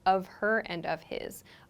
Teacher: that H sound almost disappears, like it becomes very reduced